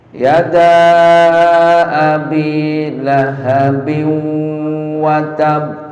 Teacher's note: Yada dibaca 2 harkat, 4 harkat sampai 6. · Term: mad zaid